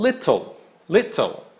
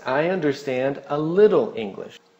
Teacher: nos Estados Unidos, muitas vezes, esse TT ou um T, que é rápido, parece até quase um R em português.